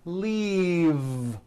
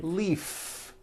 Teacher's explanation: keep the voicing going throughout the whole word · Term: voiced V